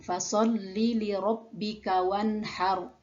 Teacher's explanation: Pada ro itu sudah berharokat sukun, maka dibaca apa adanya. Yang harus diperhatikan adalah tafkhimnya, yaitu ro dibaca tebal.